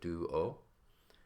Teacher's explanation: if you think about this the the D here is pronounced the tip of your tongue is behind your teeth and then you have a oo sound